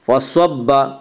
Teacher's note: فصب سواد کو پر پڑھیں گے، سواد حروف مستعلیہ میں سے ہے، حروف مستعلیہ سات ہیں جن کا مجموعہ خصہ ضغط قز ہے، یعنی خاص سواد زواد غین طوا قاف ضاد، یہ حروف ہمیشہ پر پڑھے جاتے ہیں۔